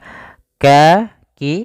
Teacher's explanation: makhraj huruf Kaf itu kan dipangkal lidah mendekati huruf qaf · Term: Ikhfa